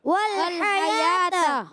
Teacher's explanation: حیات ہا پر زبر ہے، ہا ادا ہوتا ہے حلق کے درمیان والے حصے سے